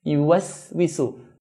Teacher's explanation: Do not make a sad sound by making the sin heavy.